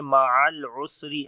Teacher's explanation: عین کو گلے کے درمیان والے حصے سے پڑھیں گے